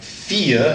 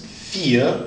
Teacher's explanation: But when it switches, you're going to pronounce the E, so it'd be like vier, and a V normally has the sound of an F, so it's vier, almost like an F.